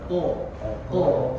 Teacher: Nah, ko itu harus dibaca dengan tafkhim tebal.